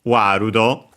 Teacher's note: accented just like in English on the wa.